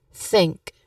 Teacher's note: Think. It does not vibrate at all, which means that this is voiceless. So we will use the version of voiceless th.